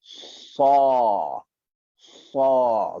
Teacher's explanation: Huruf sad, hujung lidah belakang gigi bawah. Ingat, hujung lidah belakang gigi bawah.